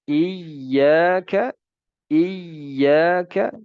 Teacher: Dan waspadalah terhadap memanjangkan tamtayt. Memanjangkan kata iyyaka. Harusnya kita baca dengan tasydid.